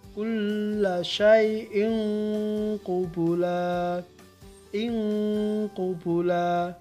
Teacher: Berdengung dengan ukuran pendek, biasanya bunyi bacaannya mengarah kepada eng ya. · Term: ikhfa sughro